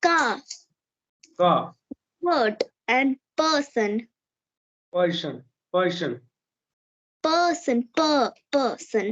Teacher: When an R comes after a vowel, it becomes silent. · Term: drop your R's